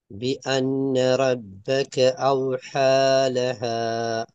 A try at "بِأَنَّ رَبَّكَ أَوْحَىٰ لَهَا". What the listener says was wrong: இதில் பாருங்க, ரெண்டு அலிப்பும் நீங்கள் ஒரே உச்சரிப்பா உச்சரிச்சிங்க அப்படியா? வித்தியாசம் விளங்கிச்சா? ஸ்டார்டிங் பி அன்ன என்று உச்சரிச்சீங்க, பின்னாடி அவ் சவுண்டை உச்சரிச்சீங்க. ஒரே எழுத்து ரெண்டு வடிவத்தில் உச்சரிக்கப்படுது. அப்போ ரெண்டுமே சவுண்டுக்கு மாறணும். பி அன்ன, பி அன்ன, பி அன்ன, சின்ன வித்தியாசம் தான்.